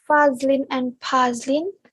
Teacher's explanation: the two Malay names, Fazlin and Pazlin, may sound almost identical when spoken by Malays, whereas this confusion would not arise when spoken by a British speaker.